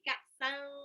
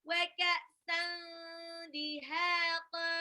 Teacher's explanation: San itu tanwin ketemu dal, itu ikhfa ya. Jadi tanwinnya jangan dibaca jelas, bukan ka'san tapi ka'san.